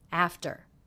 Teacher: The second syllable, very low in pitch, flat and quick.